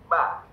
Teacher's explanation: Bibir atas ketemu sama bibir bawah. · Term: huruf ba